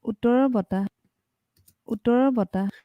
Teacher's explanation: the low generally wants to be on the first syllable, regardless of the weight sensitivity characteristics. So we see that in these two words, even though the second word is described as being heavier on the second syllable, we still see the low on the first syllable.